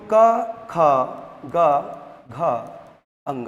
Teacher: अब क वर्ग का उच्चारण जो होता है वह कंठ से होता है।